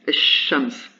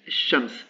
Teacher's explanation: quand je rattache l'article au mot shams, il y a une assimilation qui se fait, et on prononce esh-shams. Et donc ici, c'est le lam qui a disparu.